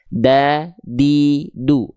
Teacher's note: Ujung lidah kita disentuhkan ke pangkal gigi dari atas kita. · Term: huruf dal